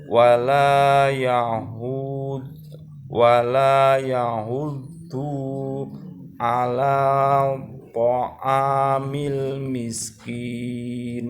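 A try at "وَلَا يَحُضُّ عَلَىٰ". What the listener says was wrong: Du-nya tidak panjang. Wala yahuddu ala, langsung ke huruf ain. Ala.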